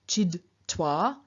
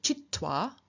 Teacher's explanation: stops lose their voice so also become voiceless so for example in front of a t a d will change into a t